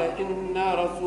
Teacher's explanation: ما تمدش النون فيها الغنة فقط